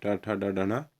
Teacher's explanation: ट की जो पंक्ति होती है ट ठ ड ढ ण, ये आपके मूर्धन्य होते हैं